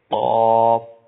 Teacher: زبان کی جڑ اور تالو کے نرم حصے سے بڑا قاف ادا ہوتا ہے